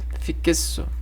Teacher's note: E em fixo, o X tem som de CS.